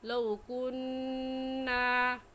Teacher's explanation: کننا میں نون مشدد ہے اور نون مشدد پر ہمیشہ غنہ کر کے پڑھتے ہیں